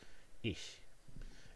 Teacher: it's the voiceless palatal fricative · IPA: ɪç, [ɪç]